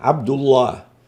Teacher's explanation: هنا الدال مضمومة، فلام لفظ الجلالة في حالة ضم ما قبلها تكون أيضا مفخمة